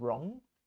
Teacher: But if you have R after a W, you don't pronounce the W.